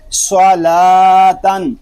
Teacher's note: صاد زبر سو، لام کھڑا زبر لا، صلا، تا دو زبر تن، صلاتن۔ صاد کو پر پڑھیں گے، لام کو ہم باریک پڑھیں گے اور تا کو بھی باریک پڑھیں گے۔ صلاتن، صاد پر کھڑا زبر تنوین۔